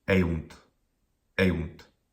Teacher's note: Well, the first syllable is e, and it's a short vowel. It doesn't end in a consonant. That syllable is short. The second syllable, oh, short vowel, but 2 consonants at the end, definitely a long syllable.